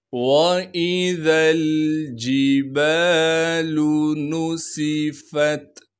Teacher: नून को बग़ैर खींचे पढ़ेंगे। सीन की सीटी को साफ़ करके अदा करेंगे। फ़ा को आगे ता साकिन से मिलाना है।